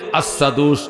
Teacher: ও দুস্থ হযরতে বেলাল হাবশী রাদিয়াল্লাহু তাআলা আনহু, তিনি আশহাদু বললে আসাদু উচ্চারণ হইতো, আসাদু শিনটা সিনের মতো উচ্চারণ হইতো